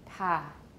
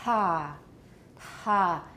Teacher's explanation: right about the moment that I'm releasing that ta, that's when my vocal folds are open the widest.